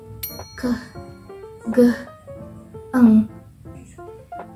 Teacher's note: in a velar consonant is the body of the tongue approaches or touches the soft palate